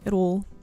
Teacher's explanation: But we hit our T sounds like a D most of the time.